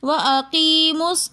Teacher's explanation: درمیان میں دو حمزۃ الوصل آ رہے ہیں جو درمیان کلام میں آنے کی وجہ سے گر جاتے ہیں، ان دونوں حمزہ کو ہم نہیں پڑھتے بلکہ ہم اقیمو کی میم کو صاد کے ساتھ ملا کر پڑھیں گے